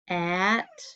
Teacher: We say it more like a short U. So there's that schwa sound above the O.